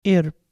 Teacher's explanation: it's conventionally pronounced like a double iota, a longer E sound